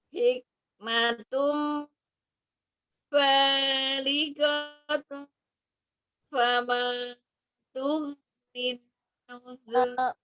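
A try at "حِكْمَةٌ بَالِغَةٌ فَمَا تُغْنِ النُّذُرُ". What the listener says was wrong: Oh, ba-nya itu kepanjangan ya. Ba-nya itu ba, fama, ma-nya juga kepanjangan. Hikmatum balighatun fama tughnin nuzur.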